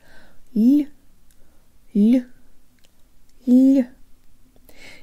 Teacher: it's an L with a slight Y sound built in. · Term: soft L